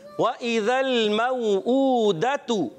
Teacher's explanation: वाव की अदायगी होंठों की गोलाई से, हमजा को खूब वाज़े करेंगे तहकीक के साथ, जाल को जा से नहीं बदलना, क्लियर रखना है और लाम को हिलाएंगे नहीं।